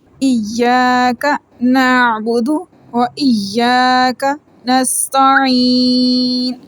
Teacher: دو یا ہیں، دونوں یا کو رک کے اور سختی سے پڑھیں گے